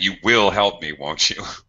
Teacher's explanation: almost like an accusation with with falling intonation at the end